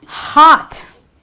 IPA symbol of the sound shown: ɑ